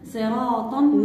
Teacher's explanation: الراء مفخمة لأنها مفتوحة ومسبوقة بحرف مستعلي اللي هو الصاد